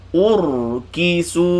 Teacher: Tengok ra ni bila saya sukunkan ra baca tebal. Tapi tengok bibir saya akan kembali ke belakang. Saya tak muncung.